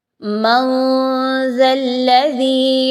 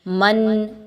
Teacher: آپ نے نون کی آواز کو کلیئر نہیں پڑھنا، چھپانا ہے ناک میں ود غنہ، ٹھیک ہے، یعنی آپ کی جو زبان ہے وہ کہیں پر بھی منہ کے اندر کے حصے میں کسی جگہ سے بھی اٹیچ نہیں ہو رہی۔ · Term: اخفا